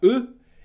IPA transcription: ʊ